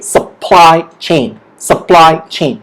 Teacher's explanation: The stress is on ply.